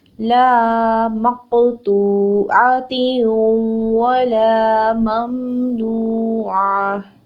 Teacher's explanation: لام زبر الف لا ہے، اس کو ہم نے 2 حرکت لمبا کرنا ہے